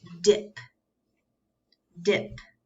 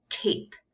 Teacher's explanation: D is the voice sound and T is the breathy sound. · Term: sister sounds